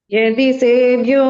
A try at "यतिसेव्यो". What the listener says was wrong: யதி சேவ்யோ இல்ல யதி கிடையாது, யதி த.